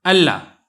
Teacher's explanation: آپ نے غنہ نہیں کرنا ہے بلکہ آپ نے ادغام تام کرنا ہے